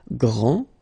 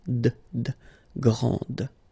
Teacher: this final D is not pronounced